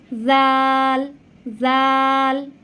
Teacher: জাল জাল উচ্চারণের সময় দুই দাঁতের মাঝখান থেকে ঠিক সায়ের মতন জিহ্বাটা সামান্য একটু বেরিয়ে আসবে।